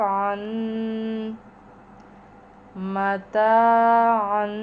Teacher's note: عین کے اوپر تنوین ہے، دو زبر ہیں، مگر یہاں پر عین کے تلفظ کا بہت خیال کرنا کہ یہ حمزہ سے نہ ملے آواز، یعنی حلق سے نکالیں